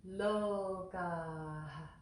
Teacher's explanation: there's a little aspiration after, at the end of the word